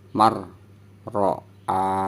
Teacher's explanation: Biasanya kan man ya, berhubung karena nun sukunnya tidak terbaca, maka dari ma langsung masuk ke huruf ro. Mar, ro, a, hanya dibaca panjang. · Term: nun sukun bertemu ro